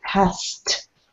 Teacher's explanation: to get that final consonant, you need to bring your tongue forward and release that air, release the T.